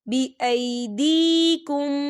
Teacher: یہاں پہ یا ساکن ہے اور یا ساکن سے پہلے زیر ہے، تو یہاں پر یا مدہ ہو رہا ہے، تو ہم اسے 2 حرکت کے برابر کھینچ کے پڑھیں گے.